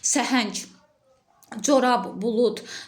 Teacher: Sonu b, d, g, c ilə hərfi ilə bitən sözlər tək işləndikdə tələffüzdə son hərflər karlaşır